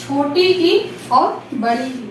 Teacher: छोटी ई और बड़ी ई इनका उच्चारण स्थान होता है तालु